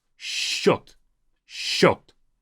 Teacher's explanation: I don't say счет. I read this as if it's two sh sounds.